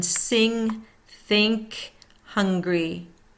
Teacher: back of tongue touching back of mouth, airflow through nose.